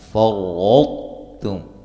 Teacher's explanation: ما الف مدہ، فَرَّطْتُمْ یہاں را کو موٹا ادا کریں گے، اور طا کا تا میں ادغام ہوگا، جب ملا کے ہم اس کو پڑھتے ہیں نا تو پہلے طا کی آواز آئے گی، پھر اس کے بعد تا کی